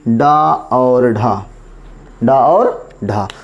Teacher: जीभ जो होगी पहले झटके के साथ ऊपर जाएगी, मूर्धा को स्पर्श करेगी, फिर आराम से नीचे आएगी। ये क्या कहलाएंगे, उच्छिप्त व्यंजन कहलाएंगे।